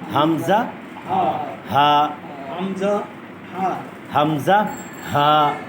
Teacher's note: 1 নম্বর মাখরাজ হলো হলকের শুরু, কণ্ঠনালীর সিনার অংশ শুরু থেকে হবে।